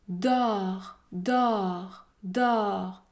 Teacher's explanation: Pour prononcer un O ouvert, votre bouche est beaucoup plus ouverte.